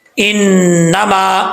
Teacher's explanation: یہاں پر نون کے اوپر شد ہے، غنہ کریں گے ایک الف کی مقدار